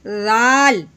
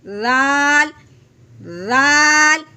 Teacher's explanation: رال ہے نرمی والا، اس کو ہم نے سختی کے ساتھ ہرگز نہیں پڑھنا، زا کی آواز نہ نکلے